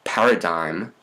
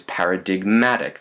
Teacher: like paradigm becomes paradigmatic. The M hops a syllable boundary.